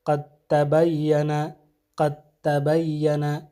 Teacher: اور اسی طرح دوسری حالت حرف دال کا تا میں ادغام ہونا، جیسے قد تبین، قد تبین، تو یہاں قد میں جو دال ہے یہ تبین کے تا میں ادغام ہو جائے گا